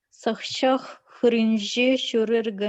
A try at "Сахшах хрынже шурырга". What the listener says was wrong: Хр. Еще точно. Хр. Не хи, а хр. Хр через у.